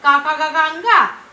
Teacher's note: गले से आवाज आ रही है, का, खा, गा, अंगा, तो इसका उच्चारण कंठ से होता है।